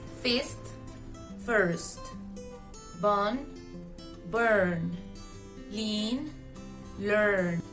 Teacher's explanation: The only difference is the R, but this makes a big difference in pronunciation because when an R is next to a vowel, it forms a new sound called R-colored vowel. This is difficult to pronounce for Spanish speakers since we tend to pronounce the I as the I we know, and the R stress doesn't exist in Spanish.